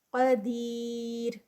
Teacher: را لائٹ ہوگا اور یا مدہ 4 کاؤنٹس کا اسٹریچ